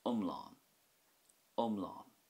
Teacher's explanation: that has a short i sound at the start with more emphasis on the á at the end